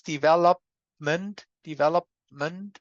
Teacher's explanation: I have the ordinary, the plain P there. Or maybe I even have the unreleased one. If I say, look at my lips.